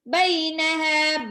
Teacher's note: bai itu harokat fathah ketemu sama ya sukun, ya, sifat lin